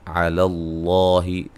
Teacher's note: لفظ اللہ کے لام کو موٹا، اس سے پہلے زبر ہے